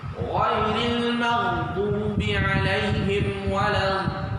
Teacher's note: Kemudian pada ghairil maghdubi 'alaihim waladdallin itu mad lazim kalimi musaqqal wajib mesti 6 harakat